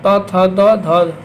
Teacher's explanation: द और ध दंत से बोला जाता है।